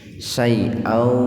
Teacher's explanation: Jadi membacanya dimasukkan ke huruf waw dengan mendengung. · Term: idgham bi gunnah